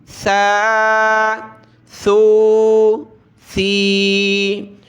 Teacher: سا پر زبان کی نوک باہر نکالیں گے دانتوں سے اور اس میں سیٹی کی آواز نہیں آنی چاہیے